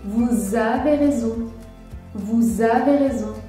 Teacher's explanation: J'effectue la liaison entre les mots « vous » et « avez ».